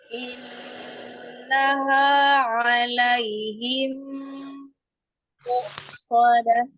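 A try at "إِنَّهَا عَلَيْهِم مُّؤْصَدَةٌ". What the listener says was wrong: Nah, innaha nun tasdid tuh gunnahnya. Nah, sama dengan alaihim muqsadah. Kalau mu-nya itu seperti ada tanda koma, hamzah. Karena hamzahnya siddah, tidak ada mengalir suara di huruf hamzah.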